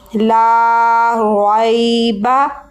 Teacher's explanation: اور یا ساکن سے پہلے زبر ہے, تو یا ساکن سے پہلے جب زبر ہو تو یہ حرف لین ہوتا ہے. حرف لین کو نہ تو جھٹکا دے کے پڑھتے ہیں اور نہ ہی لمبا کرتے ہیں.